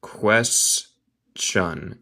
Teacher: El T suena como CH.